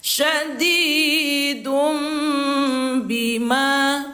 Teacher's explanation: Suara tanwin ini ditukar bunyinya menjadi suara mim sukun atau bunyi n. Bunyi N ditukar menjadi M. Ah. Sambil didengungkan dua harakat. · bukan dun lagi bacanya, tetapi menjadi dum sambil didengungkan 2 harokat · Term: iqlab